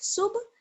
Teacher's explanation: با پر آواز بند نہیں ہوگی بلکہ آواز لوٹ کر واپس آئے گی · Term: قلقلہ